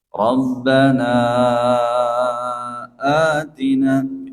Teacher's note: Mad bacaan panjang itu ada pada kata rabbana kemudian bertemu huruf hamzah. Atina. ini dibaca empat harakat namanya mad jaiz munfasil.